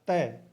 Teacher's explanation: तो आप बोल के देख लीजिए प या तय, तय बोल के देखोगे तो जीभ है वो दांतों को स्पर्श करती है